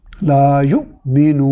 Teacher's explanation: تو اب ہم ایک الف کی برابر کے بجائے اس کو 3 سے 4 الف کے برابر لمبا کریں گے، مد وقفی کریں گے. لا یؤمنون، اور نون کو ساکن کر کے ادا کر دیں گے.